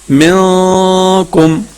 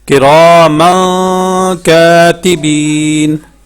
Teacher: اس کی جو آواز ہے وہ ناک میں چھپانا ہے